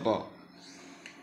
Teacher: জিহ্বার আগার পিঠ তার বরাবর উপরের তালুর সঙ্গে লাগিয়ে উচ্চারণ করতে হবে র